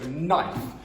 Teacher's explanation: it's spelt with a K, knife, but we do not pronounce it